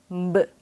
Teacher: 입술을 붙인 상태에서 입술에 힘을 주었다가 터뜨릴 듯이 음 붓 하고 소리 내야 해요 그동안은 입술에 힘을 주지 않고 그 하고 소린 하셨을 거예요 하지만